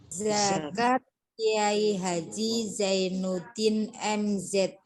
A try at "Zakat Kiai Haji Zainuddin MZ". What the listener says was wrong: Kalau zai itu masih keluar udara. Nah, tapi nggak keluar udara ya. Jadi meskipun harus mendesis, tapi nggak boleh keluar udara. Ada desisnya, harus ada desisnya, tapi nggak boleh keluar.